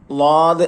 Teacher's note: നാലാമത്തത് നാവിന്റെ അരവും മേലെ അണപ്പല്ലുകളും. നാവിന്റെ വലതോ ഇടതോ ആയ ഏതെങ്കിലും അരിവ് ഉപയോഗപ്പെടുത്താം.